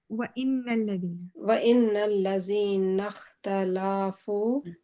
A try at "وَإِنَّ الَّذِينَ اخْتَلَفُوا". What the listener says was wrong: آپ لام کو اسٹریچ کر رہے ہیں، لام کو اسٹریچ نہیں کر رہے.